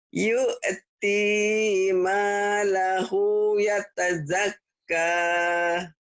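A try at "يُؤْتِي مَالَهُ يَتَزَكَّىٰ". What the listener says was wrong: Jangan kah, tapi kak.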